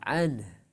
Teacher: Jadi ketika ne-nya jelas, ane itu mantul qalqalah. Tapi kalau an itu peralihan ya dari nun ke ha. An itu masih natural ya.